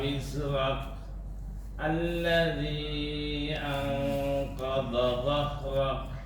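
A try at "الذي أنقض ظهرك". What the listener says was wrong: Anqadha dhahrak. Hati-hati nih. Do dengan zo hampir berdekatan. Jangan sampai anqadha dhahrak dua-duanya do. Jangan juga dua-duanya zo. Anqadha dhah. Bedanya do tidak berdesis, zo berdesis, itu bedanya. Anqadha dhahrak.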